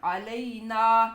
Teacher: نون الف سیدھا بغیر گنہ کے اور پورا الف لمبا کر کے پڑھنا ہے